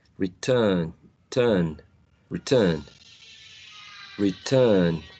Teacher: the R sound that we see in the end is not pronounced